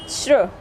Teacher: उसके बाद श्र, सा दबा हुआ निकल रहा है और रा पूरा, श्र यानी कि श और रा से